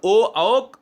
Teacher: ओ जब बोलते हो तो आपके ओट भी यानी आपके ओठ गोलाकार हो जाते हैं